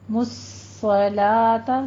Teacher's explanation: مُصَّلَاةَ، مُصَّلَاةَ نہیں کہنا، مُصَّلَاةَ، صاد کو آپ نے پر پڑھنا ہے اور تشدید بھی ادا کرنی ہے، تھوڑا سا رک کر پھر چلنا ہے آگے